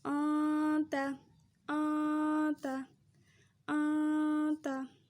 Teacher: نون کی آواز کو چھپانا ہے